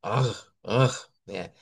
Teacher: Ahí estimulamos la gútura y cuando se mueve la gútura se mueve la úvula y es donde nos sale ese sonido